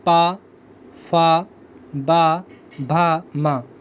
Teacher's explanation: पा वर्ग आपका ओष्ठ, इसमें आपके दोनों होंठ मिल जाएंगे